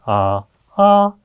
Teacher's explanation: 말도 나오는데요요 용어도 중요합니다 왜냐하면 피라는 피치 음의 높낮이 아 아 같은 아 소리인데 아 아 높낮이가 다르죠